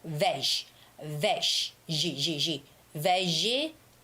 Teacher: G has that j j j sound. It's the voiced sound of sh sh sound.